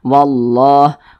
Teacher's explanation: cara membaca huruf lamnya itu dibaca idgham, langsung masuk ke huruf yang di depannya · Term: idgham syamsiyah